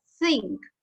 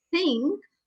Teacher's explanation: my tongue is touching my teeth from behind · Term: dental